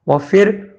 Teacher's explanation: اس کے بعد وَفِرْعَوْنَ، وفر میں واو زبر وا سے گزر کے فا راز فر پڑا ہے، را جزم والے سے پہلے زیر آیا ہوا ہے تو اس لیے پتلا پڑھنا ہے را کو